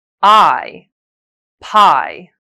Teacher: The two sounds are different due to the nature of the first halves. Your jaw drops lower and your tongue is flatter when making I.